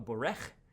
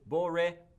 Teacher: it actually takes a patach right between actually here the resh, the second letter, and the chet, the third letter. This patach, which is not under the second or third letter, but in between, is actually called a furtive patach.